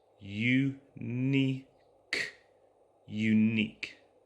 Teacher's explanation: The start of this sound is a Y sound. So the U in the spelling of unique makes a Y sound